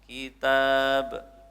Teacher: Itu di qalqalahnya, ya. Harful ba-nya maka dipantulkan sedikit